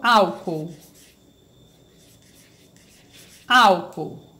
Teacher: são duas vogais mas que quando eu faço a separação em sílabas elas se separam elas ficam em sílabas diferentes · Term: hiato